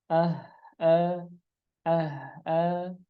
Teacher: ada yang pengucapan huruf H diakhiri dengan hamzah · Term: suara hamzah